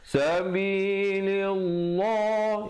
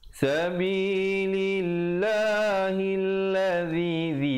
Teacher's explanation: Lillah. Di sini lafz jalalah dibaca nipis kerana datang sebelumnya baris kasrah, baris bawah. Jangan pula baca sabilillah, itu baca tebal.